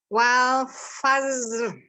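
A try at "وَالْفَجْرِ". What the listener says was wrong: Oke, huruf jim itu jangan kayak za. Wal fajr.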